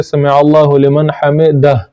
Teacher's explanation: سبحان ربی العظیم سمع اللہ لمن حمدہ، آخر میں یہ ہا ہے تو اس کو جنبش کے ساتھ پڑھنا چاہیے، آخر میں جو ہا ہے اس کی بو آنی چاہیے کم از کم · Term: ہا کی بو